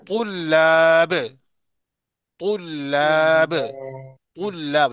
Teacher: लाम को बारीक पढ़ेंगे। तुल्लाब, तुल्लाब, यानी तो को मोटा पढ़ेंगे, लाम और लिफ को मोटा बारीक पढ़ेंगे, बा को भी।